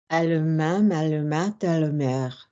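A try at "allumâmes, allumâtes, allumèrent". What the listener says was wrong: Nice. Nice.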